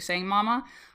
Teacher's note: m sound because it's bilabial. We're using our lips and babies can see that being made.